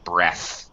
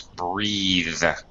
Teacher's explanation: Take a breath. But when we use it as a verb with an e on the end, it becomes breathe with a voiced th